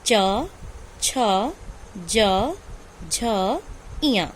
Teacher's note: चा वर्ग का उच्चारण स्थान क्या है, तालु है।